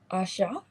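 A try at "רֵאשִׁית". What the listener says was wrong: No, so the A drops off. So instead of being Asha, it just becomes Ash.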